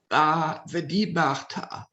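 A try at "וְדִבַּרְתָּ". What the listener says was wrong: Aha, Vedibarta. Very good.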